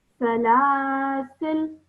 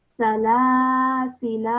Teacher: Okay, if I were to pronounce it with the normal pausing rule, which is that the fatha at the end of the word now becomes a sukoon, I would pronounce it as salasil.